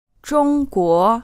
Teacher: the correct way to say the word for China is using a 1st tone and then a 2nd tone.